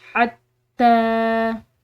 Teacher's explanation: खड़ी ज़बर है तो इस खड़ी ज़बर को हम पढ़ेंगे एक अलिफ की मिकदार लंबा।